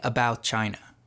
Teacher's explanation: When saying a phrase like "about China," the T in about is often dropped, leaving "about China." And in transitions like "me all," a subtle extra Y sound known as a glide is added by some speakers to transition between vowels. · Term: juncture